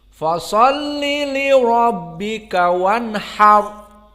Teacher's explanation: Maka fa di ayat yang kedua muraqqaqah. Dan shad mufakhamah.